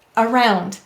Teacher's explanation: there's that lazy vowel saying uh in an unstressed syllable